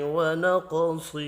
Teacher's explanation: قوف اور صاد پر پڑھے جائیں گے۔ قوف ساکن ہے، قلقلہ کرنا ہے۔